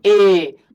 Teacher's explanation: तो जीभ का अगला भाग काम कर रहा होगा